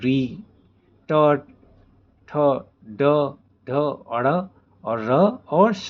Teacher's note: जो वर्ण मूर्धा मतलब मुंह के ऊपरी भाग से बोले जाते हैं उन्हें मूर्धन्य वर्ण कहते हैं